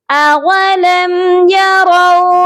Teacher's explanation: یہاں ہم نے را کو واو کے ساتھ نرمی سے ملا کر پڑھنا ہے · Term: واو لین